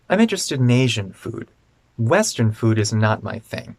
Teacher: in the answer because we're comparing asian food and western food we want to stress asian and western